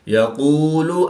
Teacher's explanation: قاف حروف مستعلیہ میں سے ہے تو اس کو پوری یعنی موٹا پڑھیں گے